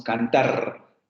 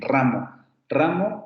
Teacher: decimos cantar cantar con una vibrante más simple que en rama ramón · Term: vibrante simple